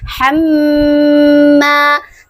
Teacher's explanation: huruf mim bertasydid adalah termasuk huruf gunnah musyaddadah. Jadi dibaca dengung 2 harokat. Hamma. Setelah huruf mim terdapat huruf alif.